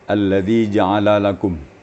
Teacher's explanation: Tadi kedengarannya ada tasydid lam ya. Antara lam dengan lam terdengar tasydid tadi. Jadi kalau bisa tasydid itu dihilangkan ya.